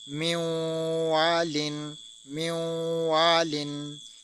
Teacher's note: والن، من والن، کیونکہ نون ساکن کے بعد واو آ گیا، واو ہونے کی وجہ سے ہم نے اس پر ادغام کیا اور ساتھ غنہ بھی کیا